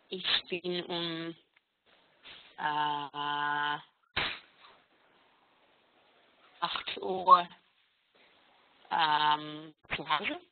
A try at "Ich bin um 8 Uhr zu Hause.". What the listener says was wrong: Sehr gut.